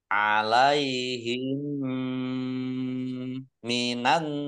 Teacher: mim sukun bertemu dengan huruf mim, idgham mutamasilain atau idgham mimi, dibaca mendengung, ditandai dengan mimnya ada tasdidnya, ya, mim tasdid dibaca gunnah atau ditahan kurang lebih 2 harokat tanpa mendengungnya.